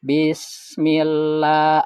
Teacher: La ini 2 harokat ya panjangnya ya. Kalau di huruf lain itu biasanya mad tabii ya. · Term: Mad tabii li ta'zim